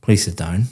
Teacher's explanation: Very flat intonation going down.